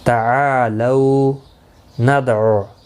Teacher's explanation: دال ساکن پر کلکلہ ہوگا